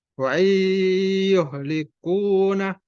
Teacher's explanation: Harusnya wa in likuna wa in, tapi idgham dimasukkan ke huruf ya. Nunnya tidak dibaca.